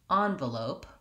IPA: ˈanvəloʊp